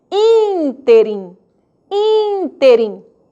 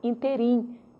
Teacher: proparoxítonas, antepenúltima sílaba, ela é que será tônica.